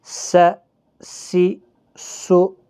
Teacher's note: سیٹی کی آواز، یہ حروف صفیریہ کے حرف ہیں